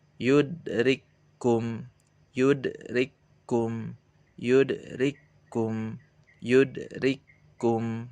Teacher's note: Seakan-akan kafnya ini masuk ke kaf yang kedua.